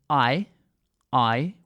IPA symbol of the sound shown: aɪ